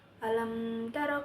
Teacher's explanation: Lam taro hukumnya adalah izhar syafawi karena ada huruf mim mati bertemu dengan huruf ta. Cara membacanya jelas tidak dengung.